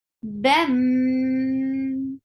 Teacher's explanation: You are merging the sound of tanween into meme and keeping sound in your nose. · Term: idgham with gunna